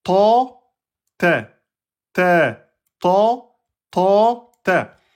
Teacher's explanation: C'est vraiment l'arrière. Gonfler l'arrière, ça va laisser un petit creux et c'est ça qui va faire votre emphatisation. C'est pas le fait d'ouvrir la bouche.